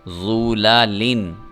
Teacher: ضا کو پر کر کے پڑھنا ہے جبکہ لام کو پر کر کے نہیں پڑھنا ہے